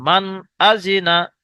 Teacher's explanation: কারণ শুরুতেই আমরা মাখরাজের জায়গায় পড়েছেন আপনারা, তানবিন ও নুন সাকিনের পরে যদি এই ছয়টি অক্ষরের মধ্যে কোনো একটি অক্ষর আসে, তাহলে তানবিন অথবা নুন সাকিনের আওয়াজকে বিনা গুণনায় জাহির করে পড়তে হবে